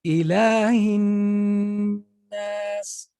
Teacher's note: So it's not a normal shadda and you keep going. You have to add the ghunna, so you spend time on it. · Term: idgham